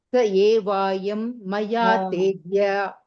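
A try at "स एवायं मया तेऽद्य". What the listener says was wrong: There you gave one dirgha. Sa evayam. Evayam.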